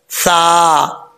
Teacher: زبان کا سرا اوپر والے دانتوں کے اندرونی کنارے سے لگے تو سا پڑھا جاتا ہے، سا۔ اس کو سا نہیں پڑھنا، سیٹی کے ساتھ نہیں پڑھنا، سا۔